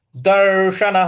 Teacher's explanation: दर्शन बड़ा वाला श है तो इसमें जीभ को थोड़ा सा रोल करके बोलेंगे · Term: बड़ा वाला स